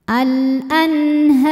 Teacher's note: Selanjutnya ada hukum idhar halqi ya. Karena nun sukun bertemu huruf halqi atau tenggorokan yaitu ha. Cara bacanya nun dibaca dengan jelas.